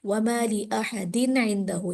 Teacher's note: عین آنے کی وجہ سے قاعدہ نون ساکن تنوین کا یہ بنتا ہے کہ وہاں پر غنہ نہیں ہوگا ، تو یہاں تنوین ہونے کے باوجود میں غنہ نہیں کروں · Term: اظہار